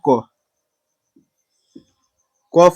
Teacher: क के उच्चारण में क प्लस अ आ रहा है लेकिन अ के उच्चारण में कुछ और नहीं आ रहा है तो एक और उच्चारण स्व यानी खुद एकरे से हो जाता है।